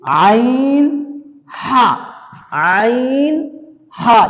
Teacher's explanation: جو درمیان حلق کا حصہ ہے وہاں سے نکلے گا عین ہا